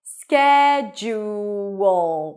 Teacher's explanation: Ju. And then at the end, we have a schwa, a reduced vowel, and a dark L.